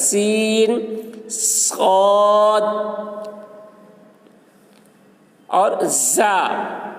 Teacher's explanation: زبان کی نوک کو اگلے اور نچلے دو دانتوں کے اوپر سے لگائیں، مخرج ایک ہے مگر آواز میں فرق ہے، یعنی زا کی آواز بلند ہوتی ہے، صاد کی آواز پر اور سین کی آواز باریک ہوتی ہے، اور سیٹی کی آواز تینوں حروف میں ہوتی ہے۔